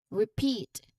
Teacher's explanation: you emphasize that long e sound in the second syllable